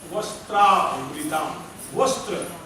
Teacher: वस्त्र वहां दंत से है, वस्त्र में दंत से